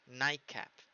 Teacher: La T pasa a una K · La que le sucede, night, termina en Ch, y la que se le sucede es una K. Una consonante plosiva, pero velar. It's velar. So you have to put your tongue very, very backwards. ¿Ok? Hay que pasarla muy, muy, muy atrás. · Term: assimilation